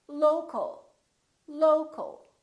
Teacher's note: we stress the first syllable here